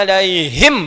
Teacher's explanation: Begitu menyebutkan alaihim nafas keluar banyak ya